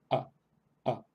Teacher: Es una A corta, pero no tiene una pronunciación tan clara como la A española. En primer lugar, es más breve que una A española.